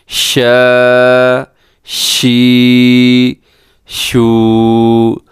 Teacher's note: شین میں صفت تفشی پائی جاتی ہے، یعنی اس میں آواز پھیل جاتی ہے